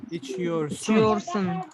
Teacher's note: I cannot say içiyorsin because I already have o at the end, so it has to continue with a round vowel. It has to continue with sun.